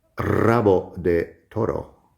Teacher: So there's more to say, but I would like to say that one thing you should know, even if you're a beginner, is that at the beginning of a word, if you have an R at the beginning of a word, you pronounce it like double R, even if it's written only as a single R.